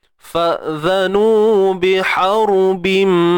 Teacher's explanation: ra yang mati sebelum yang baris atas kena tebal.